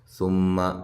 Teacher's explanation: میم مشدد پہ غنہ ضروری ہے، لمبا نہیں کرنا میم کو